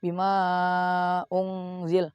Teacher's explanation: Panjangnya 2,5 alif atau 5 harokat. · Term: mat jaiz mufasil